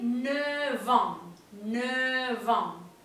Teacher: se está pronunciando como una V corta